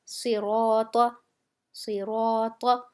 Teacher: را موٹا کر کے پڑھا جا رہا ہے، تو اس کے ساتھ جو الف ہے وہ بھی موٹا کر کے پڑھا جائے گا